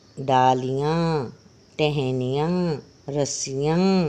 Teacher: अनुनासिक यानी कि मुंह और नाक दोनों से आवाज आ रही है